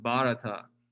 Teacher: the h is sort of silent so it's just bharata and i think the um that the · I think the accent is on the first syllable